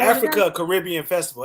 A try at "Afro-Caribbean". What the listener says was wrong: Not Africa Caribbean, Afro-Caribbean. Not Caribbean, not Africa Caribbean. It's Afro-Caribbean. Not Africa Caribbean. Because I was doing it too, but it's all one little thing.